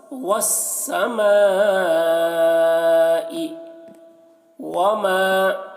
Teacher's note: مد ہے میم میں تو اس کو زیادہ کھینچیں گے